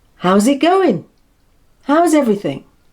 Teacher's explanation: Notice how the S in house becomes a Z sound when it's linked.